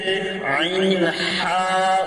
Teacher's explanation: হলকের মধ্যখান হইতে আইন হা উচ্চারিত হয়।